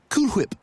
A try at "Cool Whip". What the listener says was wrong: You're saying it weird. Why are you putting so much emphasis on the H?